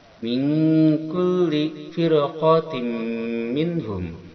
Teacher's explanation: Firqatin ada ini tanwin kasroh bertemu dengan mim adalah idgham ma'al gunnah atau idgham bi gunnah. Dia memasukkan tanwin kasroh kepada mim dengan disertai dengungan 2 harakat.